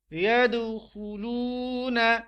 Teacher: دال پر قلقلہ کریں گے کیونکہ دال ساکن حالت میں ہے